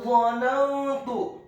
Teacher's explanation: huruf dha-nya dibaca tafkhim tebal fathah 1 harokat dengan posisi mulut bibir bawah kita agak tertutup dan posisi lidah kita di langit-langit atas. Kemudian huruf nunnya dibaca tipis fathah 1 harokat.